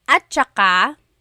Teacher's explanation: technically it's spelled at saka, but when it's pronounced, remember the TS combination, it makes that ch sound